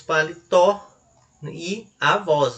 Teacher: Veja que a sílaba tônica ela é a última